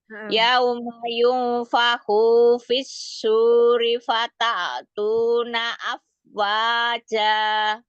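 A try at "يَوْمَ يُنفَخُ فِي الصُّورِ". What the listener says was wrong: Yunfakhu, nya nggak ada mat. Yunfakhu suri.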